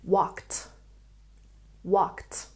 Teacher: The ed ending following the consonant K makes the t sound.